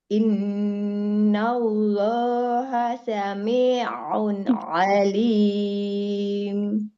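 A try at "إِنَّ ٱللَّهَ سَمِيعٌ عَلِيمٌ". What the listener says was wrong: Hanya tadi durasi panjangnya ya yang masih harus disesuaikan. Yang dua harakat maka dua harakat. Yang empat maka empat.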